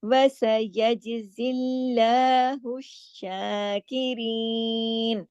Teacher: اللہ کے نام سے پہلے زیر ہے تو اللہ کے نام کو یہاں موٹا نہیں کرنا ہے ، الشاکرین، وَسَيَجْزِي اللَّهُ الشَّاكِرِينَ، شین کے اوپر کھڑی مد ہے، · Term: باریک